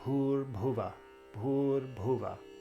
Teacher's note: the U in Bhur is a long U, and then in Bhuva, it's a short U.